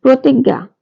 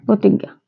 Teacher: পদের প্রথমে ব্যঞ্জন বর্ণের সাথে র ফলা যুক্ত হলে তার উচ্চারণ ওকারান্ত হয়। অর্থাৎ তার উচ্চারণ ওকারের মতো হয়। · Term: র ফলার উচ্চারণ